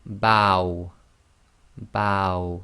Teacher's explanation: so it's a and then the W sound ow